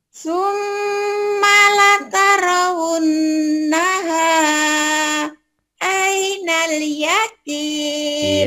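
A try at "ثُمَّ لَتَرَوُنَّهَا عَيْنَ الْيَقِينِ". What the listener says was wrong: Iya, tinggal dilatih ainnya belum nih. Dan nggak boleh putus ya, nggak boleh gini. Summalatarawunnaha aina, nggak boleh putus, harus nyambung. Summalatarawunnaha ainal yaqin. Coba lagi, jangan putus, sambungin.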